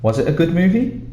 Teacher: to make it a question, and your voice goes up at the end